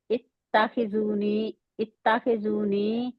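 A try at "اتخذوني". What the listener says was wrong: नहीं, अब आप ना जेर वाले को मजहूल पढ़ रही हैं ना। इत्ताखी खी।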